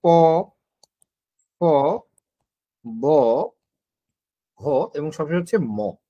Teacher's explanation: সবশেষে হচ্ছে ওষ্ঠ, যেটা ওষ্ঠ বা প বর্গীয়, যেটা হ্যাঁ, প বর্গীয় ধ্বনিগুলো আমাদের ওষ্ঠ ধ্বনি কেন বলা হয়, কারণ এগুলা উচ্চারণ করতে জাস্ট ঠোঁটের সাহায্য লাগে